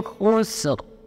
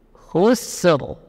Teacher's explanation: Jadi sinnya tipis, yang tebal huruf ra. Tidak boleh ditebalkan sin.